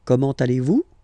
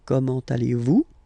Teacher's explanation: it's a question, so raise a little bit your voice at the end